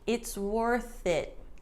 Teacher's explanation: notice that there's no pause